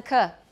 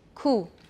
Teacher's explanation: watch the lip rounding in the consonant